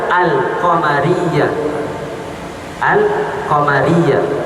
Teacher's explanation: Al-qamariyah kalau kita baca alif lamnya diizharkan, tampak. · kata nama am yang dimulakan dengan salah satu huruf qamariah maka huruf lam yang ada pada kata sandang takrif alif lam wajib diizharkan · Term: alif lam qamariyah